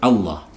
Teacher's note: diawali dengan harakat fathah sehingga lafzul jalalahnya ini dibaca tebal